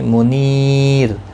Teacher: منیر نی یا مدہ ہے، 1 الف کی مقدار کے برابر کھینچ کر پڑھیں گے، اور را ساکن پڑھا جائے گا۔